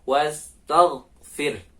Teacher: Jadi huruf go ini bukan huruf qalqalah. Jadi ketika sukun nggak boleh memantul.